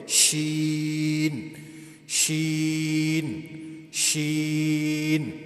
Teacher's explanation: اس کے اندر جو ہے صفت تفشی پھیلاؤ یعنی اس کو ادا کرتے وقت مخرج کے اندر پھیلاؤ ہونی چاہیے